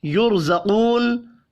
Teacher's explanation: برقن میں اب دیکھیں، را ساکن سے پچھلے حرف کے اوپر زبر ہے، را کو پر پڑھنا ہے۔ یرزقون، را ساکن سے پچھلے حرف کے اوپر پیش ہے، را کو پر پڑھیں گے